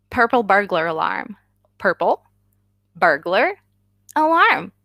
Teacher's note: And you will stumble probably because it's weird but sounds combine, right? Burglar alarm. You have a little R insertion in there.